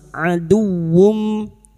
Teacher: Adu masuk pada huruf waw tanpa mendengung, tanpa ditahan lama-lama ya. Huruf dal masuk pada huruf waw tanpa ditahan, tanpa mendengung